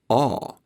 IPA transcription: ɒː